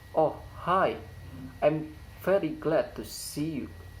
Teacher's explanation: The high fall intonation occurs in word hi and see.